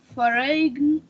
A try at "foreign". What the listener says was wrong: Okay, you said foreign. Yes, foreign, and you made a mistake. You made a pronunciation mistake. Foreign, yes, foreign. G is not pronounced here, so it's called silent. That's why it's not pronounced.